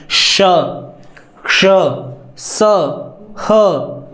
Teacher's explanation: इनको उच्चारण करते समय हमारे स्वर तंत्रों में कंपन नहीं होता · अधिक मात्रा में हवा निकल रही है ना, इसलिए ये 4 व्यंजन महाप्राण हैं। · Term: अघोष व्यंजन